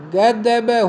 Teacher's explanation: स घोष अल्प प्राण स्पर्श ग द ब थे।